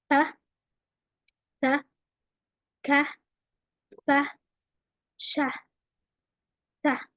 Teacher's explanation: So all of them, when I am trying to pronounce them, there is no vibrations in my vocal cord. I do not feel any movement on my vocal cords. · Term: unvoiced sounds